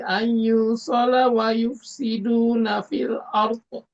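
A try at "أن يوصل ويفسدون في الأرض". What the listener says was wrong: Ada nusukun bertemu ya, ini ditahan ya, idgham bigunah di sini. Ayyusala wa yufsiduna fil ardh. Fil ardh.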